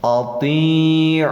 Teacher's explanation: Jadi disebut waw alif zaidah ini, ya, penambah saja, dianggap tidak ada, diidghamkan bacanya dari ain ke lapad Allah. Lafdzul jalalah hukumnya jadi tafhim tebal karena sesudah doma